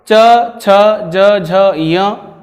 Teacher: जैसे हमारे मुख का जो ऊपरी भाग है, उस ऊपरी भाग में आप ये दांत के रूप में आप देख रहे हैं चिन्ह, इन दांतों से ठीक ऊपर का जो भाग है उसे तालु कहते हैं। और इन वर्णों को उच्चारित करते समय आपकी जिह्वा तालु का स्पर्श करती है, इसलिए इन वर्णों को तालव्य वर्ण भी कहते हैं।